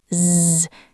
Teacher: Is ends with a Z sound. It is written with an S, but pronouncing it creates a vibration.